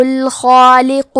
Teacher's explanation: کلمت الخالق میں حرف الخاء کی ادائیگی حلق کے اوپر والے حصے سے ہے